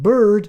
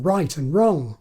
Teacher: the thing between b and d and bird is just their regular r as in right and wrong